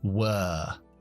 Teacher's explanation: En este caso, como lleva la W delante, que muchas veces cambia el sonido de los diptongos o de las sílabas, se convierte en la schwa larga.